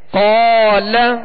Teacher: قال، اب اس کو قال لام کو نہیں کھینچیں گے، ٹھیک ہے، لام پر زبر ہے تو اسے بغیر کھینچے ادا کریں گے، اور قاف کو ہم نے دراز اس لیے کیا کہ قاف کے ساتھ الف مدہ ہے